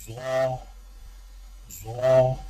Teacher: ضا، ضا کی ادائیگی میں زبان کی نوک کو سامنے والے اوپر کے 2 دانتوں کے اندرونی کناروں سے نرمی سے لگا کر اور زبان کے پچھلے حصے کو تالو کی طرف بلند کرتے ہوئے موٹی آواز میں پڑھیں